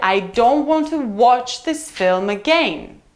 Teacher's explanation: Again is our landing point. It's the last stressed syllable in the sentence.